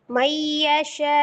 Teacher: Hamzahnya otomatis disukunkan. Hamzah dhammah ketika diwaqaf maka dia menjadi sukun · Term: dinabar